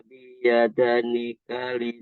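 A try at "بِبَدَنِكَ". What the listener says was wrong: Diulang. Itu dua-duanya huruf ba.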